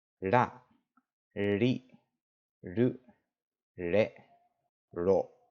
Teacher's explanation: The pronunciation, the way they actually make this tap is you place your tongue up against the roof of your mouth, like if you were saying an L, but instead of rolling your tongue back, you actually keep it relatively flat